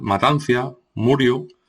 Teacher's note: inserción o conservación de I ante la vocal final